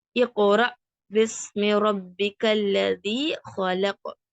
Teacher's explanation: அந்த ஹம்சாக்கு சுக்குன் செய்யப்பட்டுச்சுன்னா அந்த jerk sound கேட்கும்